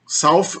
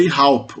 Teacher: Observa que o S inicial vira um aspirado